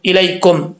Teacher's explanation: या लीन हो तो मतलब इसका यह है कि या को लंबा नहीं करेंगे। कैसे पढ़ेंगे, लाम जबर या लाई, इलाई, इलाई नहीं पढ़ेंगे, इलाई, काफ मीम पेश कुम, इलैकुम।